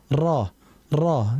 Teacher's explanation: ro dia dari ujung lidah